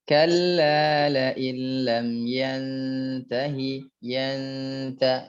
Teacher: Ya, memang dia gunnah, cuman gunnahnya dia namanya kamil, gunnah yang sempurna.